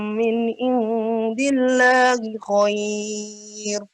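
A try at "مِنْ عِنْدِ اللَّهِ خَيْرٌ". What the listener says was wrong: Coba ainnya diperjelas, min ain.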